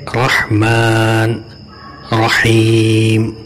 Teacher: اور را پر زبر ہے تو رحمان، رحیم میں موٹا پڑھا جائے گا